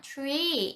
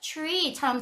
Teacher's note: T하고 R도 들어오면 약간 tree처럼 하셔야 될 것 같잖아요. 근데 잘 들으면 tree 약간 T하고 티귿이랑 치읓 사이로 들려요. tree처럼 들려요.